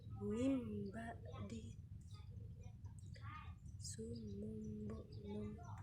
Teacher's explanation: Iqlab terjadi apabila nun mati atau tanwin bertemu dengan huruf ba, maka hukum bacaan nun mati atau tanwin tersebut dibaca dengan mim